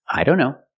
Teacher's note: here the t is between consonants so we don't pronounce it